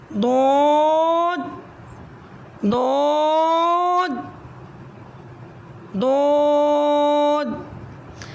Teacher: حرف حافیہ 1 ہے، جب زبان کے دونوں کنارے اوپر داڑھوں سے لگیں تو یہ حرف ادا ہوتا ہے۔ ضاد ضاد ضاد، یہ حروف مستعلیہ میں سے ہے، سے موٹا حرف بھی کہتے ہیں۔